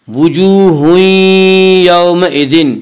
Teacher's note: واو مدہ کو ایک الف کے برابر کھینچ کر پڑھیں گے۔